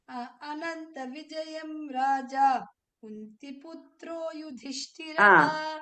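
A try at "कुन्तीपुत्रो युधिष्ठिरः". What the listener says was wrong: You are making it hasva there. Kunti is dirgha is there.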